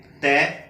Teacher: जब हम ते बोलते हैं तो हम जो है जीभ हमारी जो है दांतों के साथ जाके लगती है। ते जब बोलते हैं ते तो इसको हम बोलते हैं दंतीय।